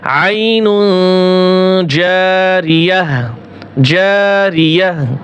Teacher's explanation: গোলতা এর স্থানে যদি অক্ফ হয় তাহলে গোলতা হা উচ্চারণ হয়।